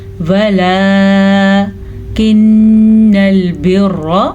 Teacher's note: इसे अदा करने के लिए जोड़ सुने, वाव ज़बर व, लाम खड़ी ज़बर ला, वलकिन्नल बिर्रा, ठीक है। नून के ऊपर शद आई है तो देखें हमने नून पे गुन्ना किया है। अब रॉ पे शद है, हमने रॉ पे गुन्ना नहीं किया, ठीक है।